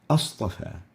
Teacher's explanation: the second connecting hamza falls out in writing and pronunciation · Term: questioning separating hamza